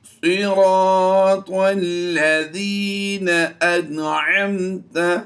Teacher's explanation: نون ساکن کے بعد عین حروف حلقی سے ہے، یہاں پر اظہار کا قاعدہ ہوگا، غنہ نہیں کریں گے۔